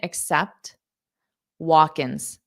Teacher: So there's really no changes with do you accept. It'll be like a softer T at the end